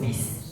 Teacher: huruf sin sangat tipis, desisnya desisnya dikecilin sekecil mungkin, seperti desis ular